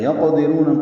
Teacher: قاف ساکن پہ قلقلہ ہے ، دال باریک ہے، را پر پڑھیں گے، رو واو مدہ